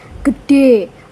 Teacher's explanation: orang Tegal biasanya menekankan bunyi G lebih kuat. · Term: fortis